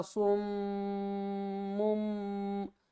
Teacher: نون کی آواز کو میم کی آواز میں بدل کر پڑھیں گے